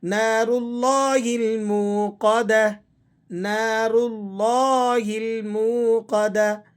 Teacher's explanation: جب اس سے پہلے والے حرف پر زبر یا پیش ہو تو لفظ اللہ کو آپ نے موٹا کر کے پر کر کے پڑھنا ہوتا ہے، اور اگر لفظ اللہ سے پہلے حرف پر زیر ہو تو پھر ہم نے اس لفظ کو باریک پڑھنا ہوتا ہے.